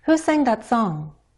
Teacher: you hear me either stepping down or gliding down in pitch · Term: falling intonation